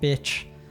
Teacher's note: if you're calling someone like bitch, then it's like downward tone, right? It's insulting the person.